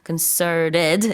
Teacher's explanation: T 발음은 물론 뭐 북미권에서 안 해도 됩니다. concerted 이렇게 North American accent로 할 수 있고.